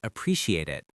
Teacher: with the t softly connecting the words